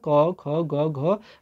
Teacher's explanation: क, ख, ग, घ आपके कंठ में यहाँ पर कुछ जोर पड़ रहा है, कंठ से ध्वनियाँ निकल रही हैं। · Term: कंठ ध्वनियाँ